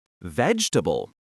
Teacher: That middle E sound virtually disappears, and the A becomes a soft schwa sound. Try emphasizing the first syllable and swallowing the rest of the word. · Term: syllable eaters